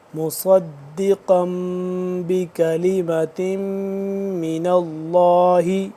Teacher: مصدی صاد موٹا کر کے پڑھیں گے، مصدی قاف بھی پر کر کے پڑھیں گے